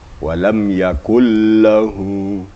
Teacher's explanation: Di dalam bacaan seakan-akan nun itu tidak ada, tidak kedengaran sama sekali, hanya kedengaran tasydid lam. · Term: idgham bila gunnah